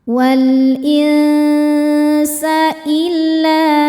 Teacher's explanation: la hukumnya mad tabi'i dhahiri sebab ada alif sebelumnya baris fathah. Cara bacanya dipanjangkan 2 harokat.